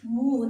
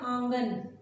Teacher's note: और उच्चारण स्थान जो है इसका क्या होता है, उच्चारण स्थान नाक और मुंह दोनों में। उच्चारण करने के लिए नाक और मुंह दोनों का सहयोग लेना पड़ता है। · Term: चंद्र बिंदु